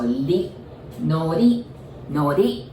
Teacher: I know it's written R-I, but remember we don't pronounce R, right? So we pronounce it like L.